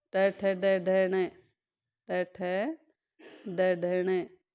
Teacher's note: तो मूर्धन्य बताया था, जो है दांत से ऊपर वाला जो मसूड़ा होता है उस पर टकराएगी जीभ